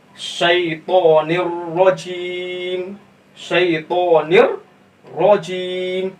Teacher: यहाँ पर क्या होगा, इदगाम ताम बिला गुन्ना होगा, उसे हम बगैर गुन्ना के पढ़ेंगे